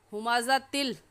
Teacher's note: इस तिल पर हम गुन्ना नहीं करेंगे क्योंकि तनवीन के बाद हुरूफ़ यरमलून में से लाम आ गया है